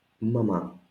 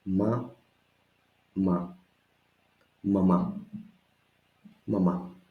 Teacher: It's important the accent to be at the end.